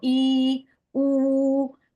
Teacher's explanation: Eh, con la lengua y el paladar, la lengua se aproxima al paladar y entonces queda la cavidad bucal más cerrada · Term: cerradas